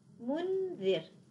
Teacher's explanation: مثال الذال، منذر. الآن بعد النون الساكنة ذال، والذال من الحروف المستفلة، إذا الغنة ستكون مرققة